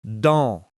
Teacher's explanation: Think of it like saying the sound on in the English word on, but without the n and with air through the nose. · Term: nasal sound